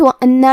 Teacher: کلمت وَأَنَّا میں حرف النون کو 2 حرف کے برابر پڑھیں گے کیونکہ اس پہ تشدید ہے اور تشدید کی اصلیت 2 حرف ہے.